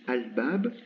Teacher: souvent il est prononcé el plus que al, mais bon, c'est une fatha.